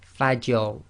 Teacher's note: So here we've got Fajr, and again the Fa is light, empty mouth, you must maintain that, and then you go into a heavy mouth on the Ra